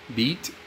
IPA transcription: bit